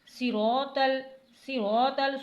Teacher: یہاں پر آپ کو دال کو کھینچنا نہیں ہے، یعنی اہدینا صراط ایسے نہیں پڑھنا، جلدی سے پڑھنا ہے، اہدینس صراط صراط صاد کو موٹا پڑھنا ہے، سیٹی بھی آنی چاہیے